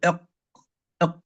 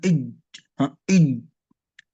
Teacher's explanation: لأنه لا يوجد صوت ولا يوجد نفس، لا يوجد صوت يجري مع الحرف ولا يوجد نفس، ينحبس كل من الصوت والنفس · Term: القلقلة